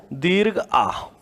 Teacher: दीर्घ आ, क्योंकि दीर्घ आ के उच्चारण में मुख सबसे ज्यादा खुलता है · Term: विवृत स्वर